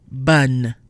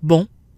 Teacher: One is when the vowel is followed by a double N or M in the same syllable. The sound is no longer nasal. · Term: not nasal